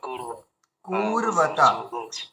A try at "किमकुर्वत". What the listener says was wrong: কুরবাতা, ওটা টান হয়ে গেছে। কিমা কুরবাতা, কিমা কুরবাতা।